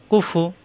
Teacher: ফা দুই ঠোঁট একত্র হবে না